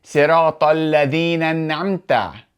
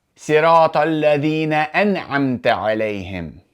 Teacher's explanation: There has to be that glottal stop because this is the cutting hamza.